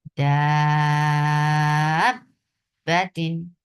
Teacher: حرف مد آئے اور اس کے بعد مشدد حرف آ جائے تو بھی نبر کیا جاتا ہے